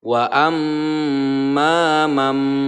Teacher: cara membaca iqlab adalah dengan merapatkan kedua bibir kemudian mendengungkan menahan selama dua harokat atau dua ketukan